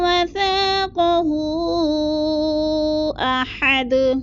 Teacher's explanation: وثاقہ پہ مد منفصل ہے، 4 الفی مد ہے، اس کو بھی ہم نے کھینچنا ہے، یعنی 4 الف کے برابر لمبا کرنا ہے۔